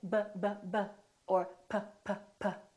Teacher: Well, sometimes we use our lips, right? So if I say b, b, b, or p, p, p, I'm putting my lips together. Both my upper lip and my lower lip are working